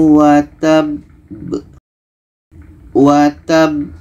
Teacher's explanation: cara bacanya kita berhenti du detik setelah itu kita pantulkan contoh tabbat Yada Abi lahabi waab watab kita berhenti du detik